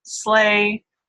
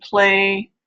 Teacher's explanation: sleigh and play make that L sound after the initial sound slightly devoiced